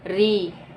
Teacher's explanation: मूर्धन्य ध्वनि आपकी है री। ये तालु के ऊपर के भाग से ना, तालु के ऊपर के भाग से उच्चारित होती है। देखिए उसी पे बल पड़ता है री।